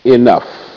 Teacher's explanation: In this case, the E is making the short I sound E.